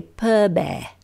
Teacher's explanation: A glottalized P does sound a lot like a B